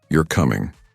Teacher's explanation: a rising intonation at the end of the sentence makes it a question